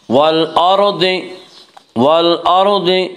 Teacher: والأرض کے را کو پر پڑھا جائے گا